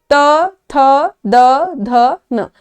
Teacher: जीभ जो है जो हम टंग है वो हमारे दांतों को टच कर रहा है नोटिस किया ना तो इसीलिए इसको हम दंत्य बोलते हैं इसी